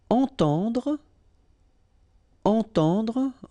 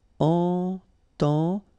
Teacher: two times this nasal en, entend, and then at the end don't insist on the final e, dr. Entendre.